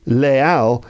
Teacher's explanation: But in the case of les Halles, no, there's no linking sound there